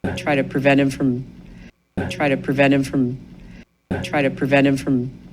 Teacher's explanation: O prevent é muito comum em várias palavras que tem o final NT, às vezes nem está no final, está até no meio da palavra. Esse NT é muito comum eles não pronunciarem o T.